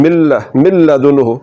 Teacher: नून की जो सिफत गुन्ना है उसको खत्म कर देना है आवाज को ना में नहीं ले जाना